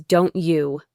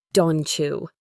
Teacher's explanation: The T and the Y combine to make a ch sound, like in cheese.